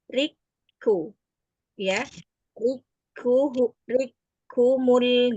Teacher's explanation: Di sini huruf kaf yang pertama dimasukkan ke dalam huruf kaf yang kedua.